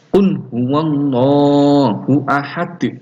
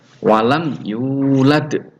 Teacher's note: Huruf dal itu ketika dia berada di akhir itu dia dibaca sukun, ya. Maka harus dipantulkan, yaitu qalqalah artinya mantul